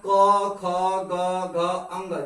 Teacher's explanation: क से लेकर के अंग तक के जितने वर्ण होते हैं, अर्थात क ख ग घ अंग, जितने वर्ण हैं या जितने अक्षर है, इनका उच्चारण स्थान क्या है, कंठ है